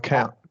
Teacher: this reduced can't is more of a glottal T